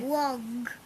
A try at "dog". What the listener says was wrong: It's not log, it's dog. There's no L, that's the.